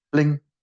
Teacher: When we get to the end of it, we use the rising tone. Ling. And you should feel that underneath your hands.